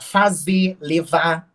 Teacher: a gente não pronuncie mesmo né Por exemplo é fazer levar a gente corta né esse R do final dos verbos né dos verbos no infinitivo